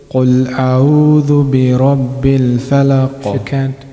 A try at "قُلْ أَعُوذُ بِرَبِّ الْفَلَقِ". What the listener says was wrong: If you can pronounce the letter Ain more clearly.